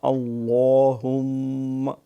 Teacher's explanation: لام موٹا میم پہ شد ہے